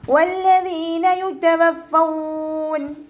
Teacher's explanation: ദാലിൻ്റെ കൂടെ യാമദ് വന്നു, 2 കൗണ്ട് നീട്ടി കൊടുക്കുക കേട്ടോ. ദാല് ലൈറ്റാക്കി കൊടുക്കുക, ദാലിൻ്റെ സൗണ്ടായി പോവാതെ നോക്കുക.